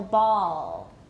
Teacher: right so ball is really a very high back vowel [Music] it's a very very high back ooh put your tongue way back